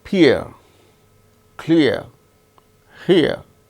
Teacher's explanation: starts with E sound, ends with A sound